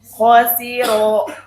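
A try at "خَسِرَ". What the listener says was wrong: Kho-nya kurang tebal.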